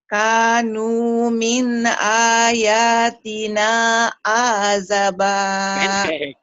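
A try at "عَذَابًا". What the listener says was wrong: Ajaba. Ada yang manjangin. Ajaba. Ayo lagi ulang.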